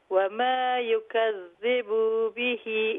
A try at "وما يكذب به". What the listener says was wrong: don't make the bar long. Okay, it's fine, but make sure وما يكذب you do not make that bar long, okay?